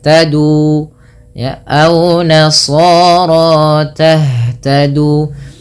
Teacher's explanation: Ha itu merupakan salah satu sifatnya adalah hamas. Hamas artinya mengalirnya nafas. Yang kedua, ha juga termasuk namanya sifat rokhawah, mengalirnya suara.